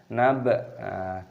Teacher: baknya berharokat sukun, kita pantulkan suaranya, kita qalqalah.